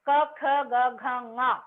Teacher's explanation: నాలుక క అన్నప్పుడు కంఠానికి తాకాలి